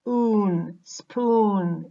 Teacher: This means this vowel is nasalized. In the word spoon, oo, which is an oral sound, becomes nasalized, in which the air, now when we produce it, the air leaves through the nose. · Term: nasalized vowels